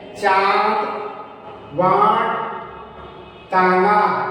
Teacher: अनुनासिक ध्वनि तो आप जानते हैं, जिससे कि नाक और मुंह दोनों से उच्चारण होता है, उस ध्वनि को हम अनुनासिक ध्वनि कहते हैं।